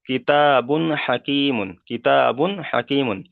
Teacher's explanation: তা তানবিনের পরে এখানে হুরুফে হালকির 6টি অক্ষরের মধ্যে থেকে এখানে হা এসেছে, তাই তানবিনের আওয়াজকে বিনা গণ্যায় জাহির করে তাড়াতাড়ি পড়তে হবে, এখানে গণ্যা করা যাবে না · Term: তানবিনের কায়দা